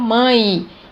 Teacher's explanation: Mas quando eu pronuncio, eu não falo mãe, eu falo mãe. Então, eu tenho o E com som de I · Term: semivogal